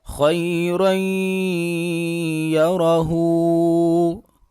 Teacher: خا حروف مستعلیہ میں سے ہے، لہٰذا خا کو پر کر کے پڑھیں گے، موٹا کر کے پڑھیں گے۔ را کے اوپر 2 زبر آ رہی ہیں تو را کو پر کر کے پڑھیں گے، آگے پھر را کے اوپر زبر ہے تو پھر را کو پر کر کے پڑھیں گے۔